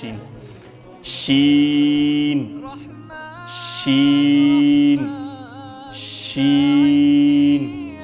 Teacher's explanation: شین چې دی دا ادا کیږي د ژبې منځ نه.